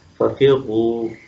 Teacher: اب اس کی مثال دیکھیں، فَفِرُّوا، اب را کے اوپر شد ہے لیکن اوپر پیش بھی ہے، تو پیش کا اصول جو ہے وہی لاگو ہوگا اس کے اوپر کہ اس کو موٹا ہی پڑھیں گے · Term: را مشدد